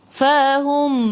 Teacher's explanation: Mim ada sukun, jelaskan mim izhar syafawi. Tutup mulut.